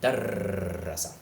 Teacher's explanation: Notice that the vowels in this word, darrasa, are still about the same length. I'm definitely not adding any kind of long vowel after that ra sound. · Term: shadda